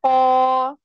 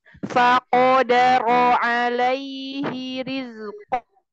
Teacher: qaf itu punya sifat isti'la, maka suara naik ke atas, enggak sekedar faqa.